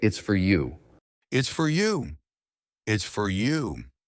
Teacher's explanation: The you is stressed